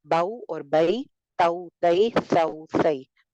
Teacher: واو اور یا پر جزم اور اس سے پہلے اگر زبر ہو، یعنی کہ جو لین جیسے کہتے ہیں نا حروف لین، واو سے پہلے زبر اور یا سے پہلے زبر، تو اس کی آواز نرم ہو جاتی ہے، یعنی نرمی کے ساتھ ادائیگی ہوتی ہے. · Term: حرف لین